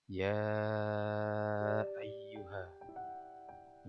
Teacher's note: ini adalah bacaan Mad Jaiz munfasil cara bacanya panjang 2-5 angka bumi disebut Majnun fase adalah karena ya ini adalah motto